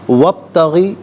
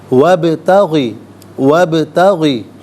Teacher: بیہا، وا علیحدہ ہے، ابتغی علیحدہ ہے، واو پر زبر ہے، اسے با ساکن کے ساتھ ملائیں گے، درمیان میں سے الف یعنی حمزہ کو حذف کیا جائے گا۔ با ساکن ہے لیکن قلقلہ ہوگا یہاں پر، تو آواز لوٹتی ہوئی محسوس ہونی چاہیے۔